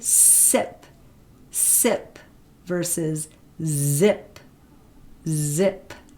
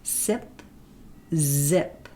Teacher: very close to that alveolar Ridge but not stopping the air the air is continuously flowing out of your mouth with a friction sound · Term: alveolar fricatives